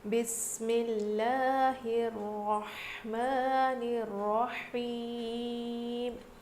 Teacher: لفظ اللہ کے لام سے پہلے زیر ہے تو اسی لیے ہم لفظ اللہ کے لام کو باریک پڑھ رہے ہیں